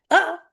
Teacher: साकिन करते हैं तो हमजा पे झटका आता है